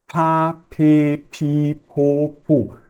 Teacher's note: deixar escapar um pouquinho de ar então pa pi po pu percebe que é como quase se eu colocasse um h entre o p e a a vogal